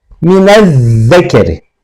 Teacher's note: Dolayısıyla biz elif lam dagısının lamını okumuyoruz. Şemsi harf olan zali şeddeli yani idğamlı şekilde okuyoruz.